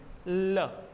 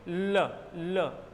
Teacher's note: पार्श्विक व्यंजन हुआ, दोनों जीवा के किनारों से निकलता हुआ प्रतीत होता है।